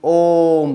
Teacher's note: तो जिनको बोलने में तीन मात्रा का समय लगा उन्हें हम क्या कहते हैं? प्लुत स्वर कहते हैं।